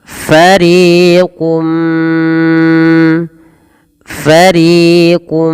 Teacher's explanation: ditahan suara mnya sepanjang dua harakat karena disertai dengan gunah maka dinamakan dengan idgham bigunah